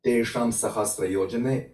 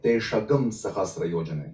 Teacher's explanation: So for example, anusvara before sh, s, h, or hak, and r, is changing into g. So this inserted sound is actually g. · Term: agama anusvara